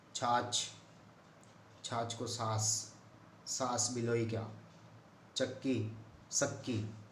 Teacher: अनेक स्थानों में च और छ का जो उच्चारण है प्राय स हो जाता है राजस्थानी भाषा में